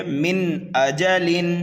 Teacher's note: نون ساکن اور تنوین کی آواز کو بالکل صاف کر کے پڑھتے ہیں۔ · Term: اظہار